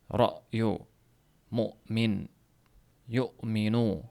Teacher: Hattoki bu kindikka ham tebranish beradi. Hamzada misol uchun royu mo'min yomminu deb talaffuz qilinganda mahraj to'liq yopilib qoladi bir muddat. · Endi hamza harfida esa tovish paychalari bir muddat berkilib keyin ochiladi.